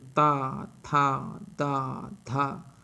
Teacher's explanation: त वर्ग का उच्चारण स्थान दांत है · तो जिह्वा हमारी किसको स्पर्श करती है, दांत को, तो इसलिए इनका उच्चारण स्थान कहाँ है, दांत है।